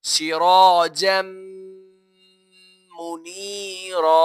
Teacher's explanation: میم حروف یرملون میں سے آ رہا ہے، اسی لیے یہاں پر بھی ہم غنہ کر کے پڑھیں گے